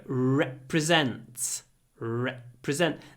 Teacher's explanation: the e at the beginning is really short but the r is quite long